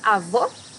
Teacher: here you have a close o